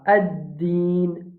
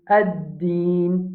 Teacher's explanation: Ad-din, nous allons mettre l'emphase au sadal là. Ad-din, nous devons mettre l'emphase au dal.